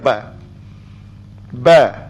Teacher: kita dah tahu dah huruf ba adalah huruf tahan mulamula dan huruf ba dia adalah huruf yang tahan nafas